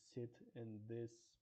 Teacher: fricative consonants which involve squeezing air through a small gap in our mouth.